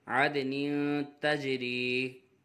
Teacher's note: تنوین کے بعد حرف اخفا میں سے تا آ رہا ہے، اخفا ہوگا، غنہ کر کے پڑھیں گے